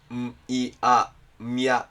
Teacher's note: has three phonemes , is pronounced [m] [j] [a], and has three actions